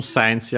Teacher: The T becomes Chi because Tachi, Tsute, To of the Tagyo, the Taro of Kana. On its own sensi, accent on the Se.